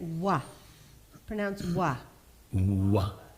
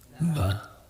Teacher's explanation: Va is a little bit of a different letter because it is dentolabial. If we pronounce a fully labial letter, we get wa.